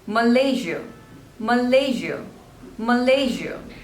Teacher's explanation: So there are three syllables and the stress is on the second one